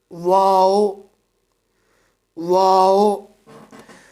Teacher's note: دونوں ہونٹوں کی گولائی سے ادا ہوتا ہے یہ حروف ایک ہی ہے: واو، واو۔